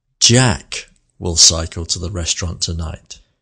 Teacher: you can hear that the word Jack has more melody plus it also has a pause after the word